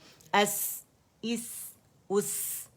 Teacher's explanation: سفیر بھی ہے, ہمس بھی ہے, آواز بھی چل رہی ہے, باریک بھی ہے